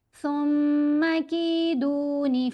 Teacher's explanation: پھر میم مشدد ہے، میم کے اوپر غنہ کرنا ہے